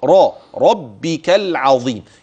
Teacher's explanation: يبقى الراء تفخم ولاحظ المشدد اوعى تخفف